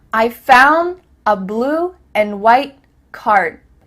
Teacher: cut off the letter D at the end of words